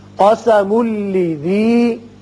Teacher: میم کو جب لام سے ملائیں گے تنوین کے بعد لام ہے ادغام بغیر غنہ ہوگا